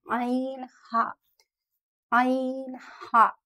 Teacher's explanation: वस्त हलक, middle throat, यानी हमारे गले के बीच का हिस्सा